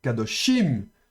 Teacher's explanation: l'accent se déplace de dosh, il se déplace sur la dernière syllabe. Donc on va prononcer plus fortement les suffixes dans les mots au pluriel ou au féminin. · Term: l'accent tonique